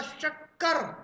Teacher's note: इस सा को बोलते समय जीभ तालू पर लगी थी। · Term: तालव्य शाह